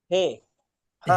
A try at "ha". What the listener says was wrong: হে নয়, হা। হ্যাঁ, হা জাবার হা। জাবার আ।